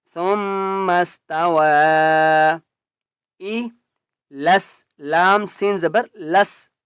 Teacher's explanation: لام کو سین کے ساتھ ملائیں گے اور مضبوطی کے ساتھ پڑھیں گے